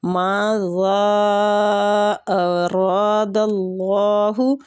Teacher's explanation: را کے اوپر زبر ہے، زبر کی وجہ سے اس کو پر پڑھیں گے۔